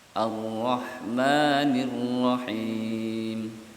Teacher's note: Seakan tak ada getaran, tapi bergetar, 2 getaran.